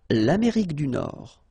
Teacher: final D, not pronounced